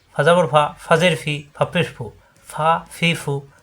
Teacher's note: দুই দাঁতের আগা নিচে ঠোঁটের পেটে লাগবে ফা দুই ঠোঁট মিলবে না